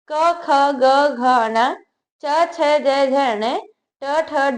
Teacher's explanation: यह व्यंजन कंठ तालू मूर्धा दंत और ओट के स्पर्श से बोले जाते हैं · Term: स्पर्श व्यंजन